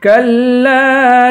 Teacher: کاف کو لام سے ملا کر لام کو ایک الف کی مقدار کھینچ کے پڑھیں گے، اس والے لام کو بھی ایک الف کی مقدار کھینچ کے پڑھیں گے۔